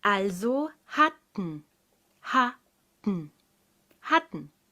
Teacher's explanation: Leg die Zungenspitze fest hinter die oberen Schneidezähne. Es gibt keine Explosion wie bei einem normalen T. Also keine Explosion, kein T. · Denn die unbetonte Silbe ten wird im Deutschen nicht ten gesprochen, sondern n.